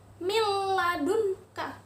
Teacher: lebur masuk ke huruf lam tetapi tidak berdengung kalau tadi itu hampir guna baru dengung yang ini tidak berdengung